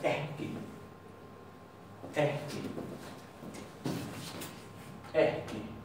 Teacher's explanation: ya no se va a pronunciar como doble K, se va a pronunciar como HK